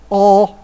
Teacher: O, which would be a low back vowel